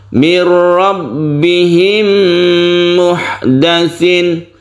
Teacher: Mir rabbihim tidak dipanjangkan, cukup ditasydidkan. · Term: bila gunnah